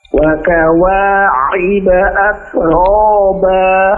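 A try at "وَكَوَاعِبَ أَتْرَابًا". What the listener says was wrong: ainnya jangan terlalu dalam ya, jangan wa kawa'iba. Wa kawa'iba, agak dilembutkan sedikit. At.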